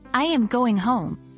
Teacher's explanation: Falling intonation, common in statements